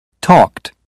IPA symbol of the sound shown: t